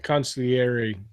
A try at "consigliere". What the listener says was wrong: But you got to say it you got to roll the R, don't you?